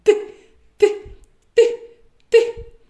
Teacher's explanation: Він стукає за верхніми зубами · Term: звук т